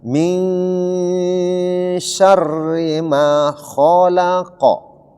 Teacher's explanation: Nun mati ketemu sya ikhfa. Dibaca samar-samar nun matinya. Kemudian masuk sedikit ke huruf syin. Kemudian dri itu harus dibaca tipis karena kasrah.